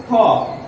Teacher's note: খ হচ্ছে মহাপ্রাণ এবং অঘোষ একটি বর্ণ